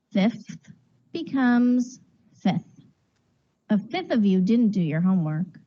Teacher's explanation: Therefore, to speak more efficiently and with more rhythm, the native English speaker unconsciously deletes the f sound and says simply 1/5.